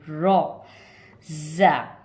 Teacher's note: सीधे हाथ उल्टे हाथ दोनों हाथ की दाढ़ों पे टच करेंगे तो रॉ की आवाज़ निकलेगी